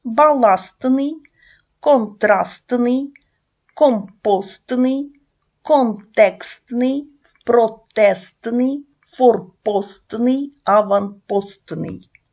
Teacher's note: в вимові Т не чується А на на письмі ми записуємо пишемо букву т баластний контрастний